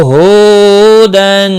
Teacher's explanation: ہو واو مدہ ہے، اس کو بھی ایک الف کے برابر کھینچ کر پڑھیں گے۔ تنوین کے بعد حروف حلقی کا حمزہ آیا ہے، اظہار حلقی ہوگا، یہاں پر گنہ نہیں ہوگا۔